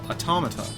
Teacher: The emphasis is on the second syllable, automata.